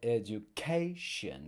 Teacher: So it's actually the next to last syllable we stress in English. Whereas in the Portuguese cognates, it's the last syllable where we are putting the stress. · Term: word stress